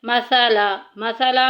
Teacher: सा में सीटी नहीं करेंगे